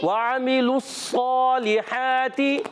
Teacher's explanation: واو کی ادائیگی ہونٹوں کی گولائی سے, عین حلق سے, حلق کے درمیان والے حصے سے ادا ہوتا ہے